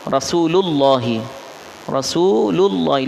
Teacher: تو یہ جو لام کے اوپر پیش آ رہا ہے تو لفظ اللہ کا لام اس کی وجہ سے موٹا ہو جائے گا، آواز موٹی ہوگی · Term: تفخیم